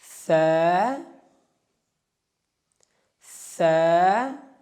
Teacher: زبان کی نوک اور ثنایا علیہ کے سرے سے فا ادا ہوتا ہے. فا فا.